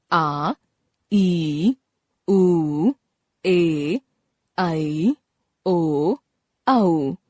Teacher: अ, इ, उ, ऋ, दीर्घ स्वर। जिन स्वरों के उच्चारण में ह्रस्व स्वरों से लगभग दुगना समय लगता है, उन्हें दीर्घ स्वर कहते हैं। ये सात होते हैं आ, ई, उ, ए, ऐ, ओ, औ।